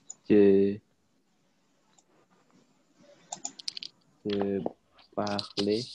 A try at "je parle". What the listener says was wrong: Ya, parle, jangan parle ya. Nggak ada apa-apanya, jangan diucapkan e ya. Je parle.